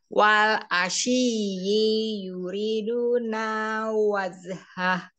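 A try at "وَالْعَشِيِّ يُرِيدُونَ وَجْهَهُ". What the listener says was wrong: Nah, masih keseret. I juga ya, jadi langsung yuri gitu. Wal asyi yuriduna wazhah.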